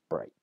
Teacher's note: the consonant represented by the gh is lost completely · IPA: [brɪçt] > [bri:t] > [braɪt]